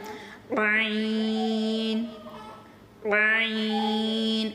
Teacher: یہ حلق کے درمیان سے نکلتا ہے